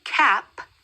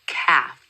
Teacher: another challenge that can come up is replacing the P sound with the F sound